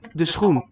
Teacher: Two fricatives together, which is pretty cool.